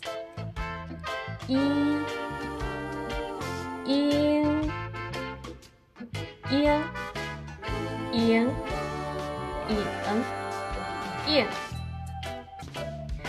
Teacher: Igualmente se puede dividir en I y N. Pronunciamos una I y luego la lengua se levanta y va hacia atrás. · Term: vocal nasal trasera